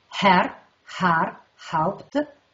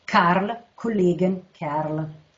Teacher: Nella prima parte domina la fricativa glottidale sorda, Herr, Har, Haupt, e nella seconda parte invece la consonante occlusiva velare sorda